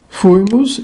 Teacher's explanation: penúltima breve neste caso o assento retrocede para a anti penúltima